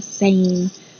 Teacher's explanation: Make sure that you say this A sound very long, same.